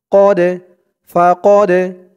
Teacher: এই ডালটা হচ্ছে কলকলার হরফ ধাক্কা দিয়ে পড়তে হবে